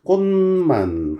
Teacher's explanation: 꽃만 하고 비음으로 바뀌어버렸고